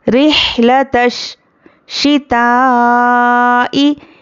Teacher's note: यह है मद्दे मुत्तसिल का क़ायदा। इसको हम 5 से 6 अलिफ के बराबर खींच कर पढ़ेंगे। तो मद्दे मुत्तसिल के में क्या है, हुरूफ़ मद्दा के बाद हमज़ा उसी कलिमे में होता है, तो हमज़ा पर ज़ेर है, इसको जल्द अदा करेंगे, हमज़ा को जल्दी पढ़ेंगे।